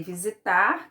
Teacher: a última sílaba tônica é o tar, então visitar é uma oxítona